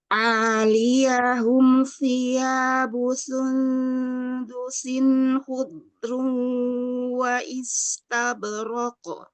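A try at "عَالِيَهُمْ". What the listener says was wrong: A-nya bukan berdiri sendiri ya, bukan aliyahum gitu enggak. Aliyahum satu ya, satu kata nyambung ya. Aliyahum.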